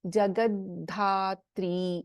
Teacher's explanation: ಇನ್ ಜಗದ್ಧಾತ್ರಿ we have ಅಲ್ಪಪ್ರಾಣದ and we have ಮಹಾಪ್ರಾಣ ಧ